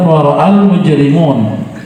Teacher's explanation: Kalau lanjut kemudian wara'al mujrimun, setelah hamzah itu ada mad tidak dibaca panjang ya, wara'a tidak dibaca panjang karena ada sukun setelahnya ya. Wara'al mujrimuna dibaca panjang karena mad tabi'i waw sukun sebelumnya dhammah.